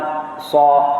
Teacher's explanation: Jadi sa ni sifat yang sebelum ni kita belajar itu adalah hamas. Sad itu adalah bersifat dengan hamas, berdesir kan.